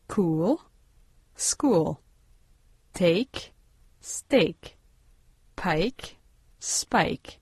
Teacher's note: Quand en français il n'y a pas d'émission d'air, pas de souffle après les consonnes p et que en anglais ces consonnes sont suivies d'un souffle d'une légère explosion sauf lorsqu'elles sont précédées de s